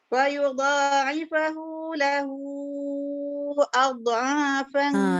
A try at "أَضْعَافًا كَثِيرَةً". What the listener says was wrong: Dia bunyi adha. Dia tak ada qalqalah. أضعافا كثيرة.